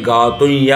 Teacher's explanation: ఎప్పుడైతే అనుస్వారం వస్తుంది, ఇప్పుడు చూడాలంటే గాతుం యజ్ఞాయ, అటువంటప్పుడు అనుస్వారం తరువాత యకారం ఉంది కాబట్టి గాతుయ్య అంటే 2 యకారముల యొక్క ఉచ్చారణ వస్తుంది